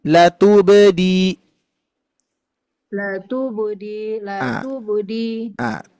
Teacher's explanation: ada huruf ba sukun yang mana sifatnya memantul atau qqolah Bu ya makanya betul-betul harus memantul la tubdi l Budi l